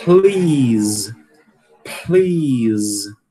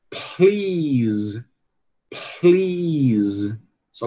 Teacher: o som só começa a vibrar mesmo na vogal, certo?